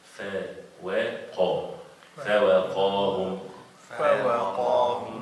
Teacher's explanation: the fa is light and the waw is light, and then the qaf is heavy.